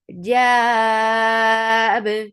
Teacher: this sukoon has turned this two counts long vowel into four. This is madarit lis sukoon. · Jab, because of this work we are giving sukoon here. This sukoon is bringing in qalqala on ba, and this sukoon has turned this two counts long vowel into four.